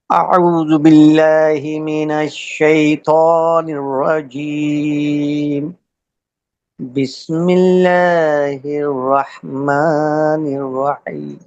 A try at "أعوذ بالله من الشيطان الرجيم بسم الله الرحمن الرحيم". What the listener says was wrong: یہ تھوڑا سا بیچ میں, وہ اس لیے ہوا کہ بیچ میں تھوڑا سا وقفہ کم لیا تھا نا, سانس کو صحیح سے نارمل نہیں کیا.